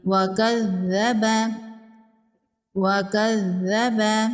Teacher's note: ذال کو نرمی سے پڑھیں گے، تشدید ہے، اس کو 2 بار پڑھیں گے